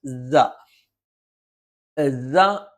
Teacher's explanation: തൊണ്ടയുടെ താഴ്ഭാഗമാണ് ഹംസ ആണെങ്കിലും തൊണ്ടയുടെ താഴ്ഭാഗമാണ് തൊണ്ടയുടെ മധ്യഭാഗമാണ് സ എന്നുള്ള അക്ഷരം നാവിന്റെ കൂർത്താറ്റം രണ്ടു വരി മുൻപല്ലുകൾക്കിടയിൽ പിന്നിലായിട്ട് വരും